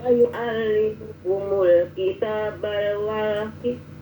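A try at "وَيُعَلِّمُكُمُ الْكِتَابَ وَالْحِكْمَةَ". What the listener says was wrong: jangan kasih al wal hikmah wa yu'allimukumul kitaba wal hikmah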